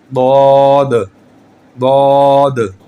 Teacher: زبان کی جو سائیڈ ہے یہ آپ کے اوپر والے دانتوں کے جڑ کے ساتھ جب یہ ٹچ ہوگی تو یہ نکلے گا ضاد